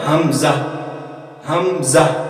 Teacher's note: حمزہ اور ہا یہ وہ حروف ہیں جو حلق کے آخری سینے کی طرف والے حصے سے ادا ہوتے ہیں